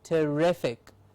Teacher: rific gets the stress means rific is said with a little more effort